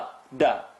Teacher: Dal is tip of the tongue behind the top two teeth. A lot of people tend to take the tongue up.